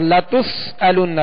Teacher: سین میں سختی یعنی سیٹی کی آواز پیدا ہوگی